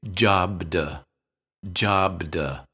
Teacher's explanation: B is a voiced sound so we tend to say jobd